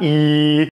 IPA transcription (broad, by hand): i